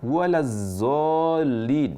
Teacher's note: itu mengubah huruf d menjadi zai tapi tafkhim tidak diperkenankan juga.